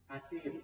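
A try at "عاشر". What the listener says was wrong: Ashir. Yang panjang di depannya. Ashir.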